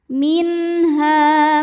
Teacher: Cara bacanya dipanjangkan h-nya dua harakat. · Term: thobi'i